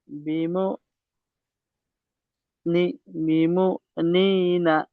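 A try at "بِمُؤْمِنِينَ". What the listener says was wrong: বিমু মি নি না, মি আছে একটা, একটা মি, মি এক্সট্রা আছে মি।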